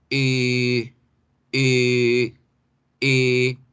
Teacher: Entonces, este sonido, redondeamos la boca, miren allá, cojan su espejo, mírense, pónganlo frente a usted, redondee la boca como si fuera a decir la O, pero no dice O, dice E. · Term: vocal larga